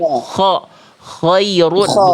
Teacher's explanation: vokalnya sebenarnya huruf kho ini vokalnya vokal A, tapi vokal A-nya gemuk kayak vokal O karena pangkal lidah naik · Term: huruf tebal